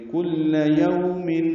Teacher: یو اولین ہے، ہونٹوں کو گول کریں گے، آگے لائیں گے.